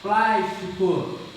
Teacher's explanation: antepenúltima sílaba é tônica, então é uma proparoxítona.